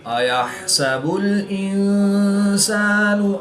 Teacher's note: نون ساکن کے بعد سین حروف اخفا میں سے ہے تو یہاں پر اخفا ہوا یعنی غنہ زمانی کر کے پڑھیں گے